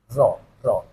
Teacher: nah ro ini ada getaran sedikit ya punya sifat takdir ini ro enggak boleh sampai getarnya berlebihan cuman dua getaran sudah cukup ya ini makhrajul hurfnya ujung apa roh yaitu di ujung lidah